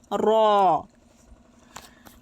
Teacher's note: জিহববার আগার পিঠ তার বরাবর উপর তালোর সাথে লাগিয়ে উচ্চারিত হবে র